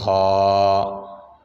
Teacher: خا یہ بھی حروف حلقی میں سے ہے، یہ گلے کے اوپر سے ادا ہوتا ہے